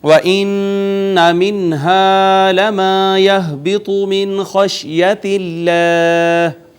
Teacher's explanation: مدہ، پھر ہا اقصی حلق سے، من پہ پھر اظہار، اور اس میں جلالت کا ماقبل مکسور، لہٰذا ہم نے اس کو مرقق یعنی باریک پڑھا · نون مشدد پہ غنہ، نون ساکن پہ اظہار، الف مدہ، پھر الف مدہ، پھر ہا اقصی حلق سے